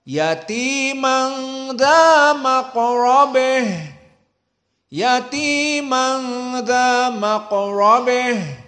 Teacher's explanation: Adapun qiraah yang kedua dari qiraah Al-Kisai, yang mana Al-Kisai membaca ha at-ta'nits dengan al-imalah al-kubra